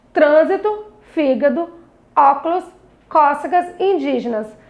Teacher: a sílaba mais forte, que eu falava com maior intensidade, era a antepenúltima sílaba, por isso era chamada de proparoxítona.